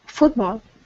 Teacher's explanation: this word here is pronounced football. The stress is at the very beginning.